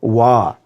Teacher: जिन वर्णों का उच्चारण दंत और ओष्ठ से होता है उसे हम दंतोष्ठ वर्ण कहते हैं